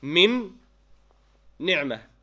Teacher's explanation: When you recite it, you do idgham with ghunna.